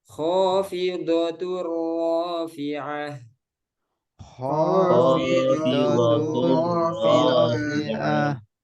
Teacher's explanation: Kha-nya tebal ya. Apa sifatnya? Isti'lah. Bukan kha tapi kho.